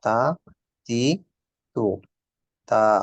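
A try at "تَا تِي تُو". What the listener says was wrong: টিটা লম্বা হয়ে গেছে একটু। তা তি টু।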